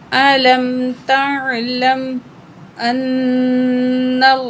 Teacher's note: अलम तअलम अन्नल्लाह, हमज़ा को नून तशदीद के साथ मिलाएंगे और नून तशदीद में गुन्ना करके पढ़ेंगे। गुन्ना नाक में आवाज़ ले जाकर ठहराने को बोलते हैं।